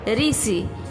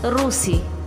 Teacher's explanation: अभी देखेंगे री का उच्चारण हिंदी में री जैसा और ओडिया में रू जैसा होता है। उदाहरण देखिए, ऋषि हिंदी में उच्चारण है ऋषि, ओडिया में उच्चारण है रूसी।